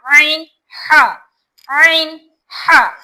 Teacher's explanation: ऐन ऐन गाढ़ी आवाज आती है। ऐन और हा ये बीच हलक से निकलने वाले हैं। हलक के दरमियानी हिस्से से निकलेंगे।